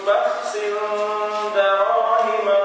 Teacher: Sin jumpa dengan dal, ikhfa, kena ada dengung, ya. Wa sharawhu bi thamanin bakhsin darahima ma'dudah.